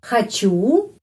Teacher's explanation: penekanannya pada huruf U, karena itu O pengucapannya A.